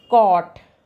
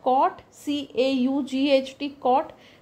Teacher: जैसे कोट and कॉट, तो कोट में COAT कोट ओ की मात्रा, और कॉट CAUGHT कॉट longer sound है क्योंकि ओ को थोड़ी देर तक बोलना पड़ता है